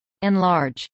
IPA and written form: ˌɛnˈlɑːɹdʒ (enlarge)